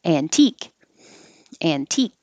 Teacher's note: the t is after the n but the t is in the stressed syllable so you can't drop it you have to keep it